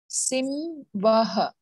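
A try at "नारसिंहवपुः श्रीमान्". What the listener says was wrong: Narasimha va so first ha then va Simha vapushriman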